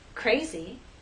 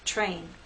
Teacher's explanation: R is a voice sound but after these three consonant sounds it begins voiceless and then becomes voiced as we go into the next vowel sound